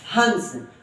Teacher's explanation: अनुस्वार का उच्चारण सिर्फ और सिर्फ नाक से होता है आवाज नाक से गूंजे गी